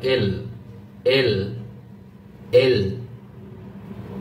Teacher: জিহ্বাটা উপরের দাঁত আছে না, উপরের দাঁতের গোড়ার সাথে লাগতেছে এল, ডান পাশে বা বাম পাশে উপরের দাঁত, হ্যাঁ এখানে।